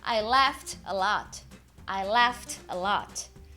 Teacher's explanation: laugh, consoante desvozeada, ed tem som de t.